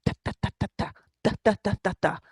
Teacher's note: Pronouncing D's, T's, L's, and N, the broad sound is created when the tip of your tongue is pressed against the upper part of your teeth